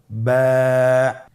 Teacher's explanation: এর মাখরাজ হলো আপনের দুই ঠোটের ভিজা অংশ থেকে আপনি উচ্চারণ করবেন